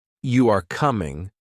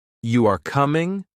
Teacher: if you say you are coming with a flat tone, it is a statement. But if you say you are coming with a rising tone, it is a question. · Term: intonation